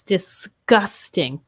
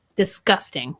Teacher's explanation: We might pronounce a G as more of a K sound. So yes, disgusting.